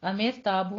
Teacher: امیر تابو میں را ساکن ہے، پیچھے ہمارے پاس کسرہ ہے، یہاں پہ را جو ہے ہمارے پاس باریک ہوگی